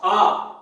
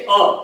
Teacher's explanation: आ बोलने में अ के ठीक दोगुना समय लगता है और दोगुना बल लगता है।